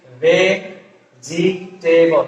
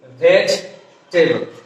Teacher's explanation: in vegetable there we have to drop another vowel, that is e. আমরা এখানে syllable, আমরা যখন আমাদের দেশে প্রায় সবাই উচ্চারণ করি হচ্ছে ভেজিটেবল, মানে এখানে পুরো এক সিলেবল কয়টা, 1 2 3টা.